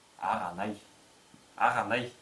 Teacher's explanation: Между двумя гласными заднего ряда в быстрой речи взрывная задняя глухая буква К переходит в щелевую заднюю звонкую букву Г, что будет произноситься как аганай.